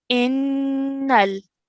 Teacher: we have a noon mushaddad, so we have to produce a ghunna sound for 2 seconds.